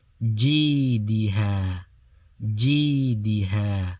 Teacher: So G is long and ha is long. D is not long.